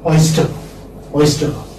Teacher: As I told you earlier, that R is not pronounced. Okay, since it's not pronounced, we don't transcribe also.